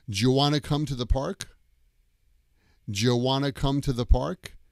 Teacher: the do you gets squeezed together. Jew.